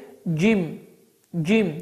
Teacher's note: dilin ortası yuxarı damağa dəyərək, hava axını dayanaraq Azərbaycan dilində olan g səsinin oxşardır